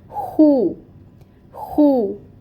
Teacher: خوا میں آپ نے خراش لانی ہے، ہونٹوں کو گول کرنا ہے پیش کی ادائیگی کے لیے